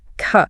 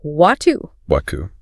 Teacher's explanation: This means the R at the end of a syllable or word is mostly silent, and it's often replaced by just a slight elongation of the vowel that comes right before it. So, the word car doesn't have that hard, curled tongue American R. It just sounds like ca. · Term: dropped R